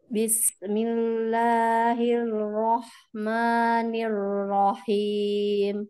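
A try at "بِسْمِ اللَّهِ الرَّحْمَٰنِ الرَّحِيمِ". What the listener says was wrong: Ya, jadi L. Nah, yang saya dengar ya apanya seperti huruf L. Bismillahirrahmanirrahim gitu. Rahim.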